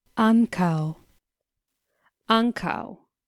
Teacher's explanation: again we find two syllables with the stress on the first syllable